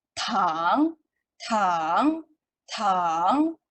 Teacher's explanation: tone yang ketiga, which is dia turun dan naik.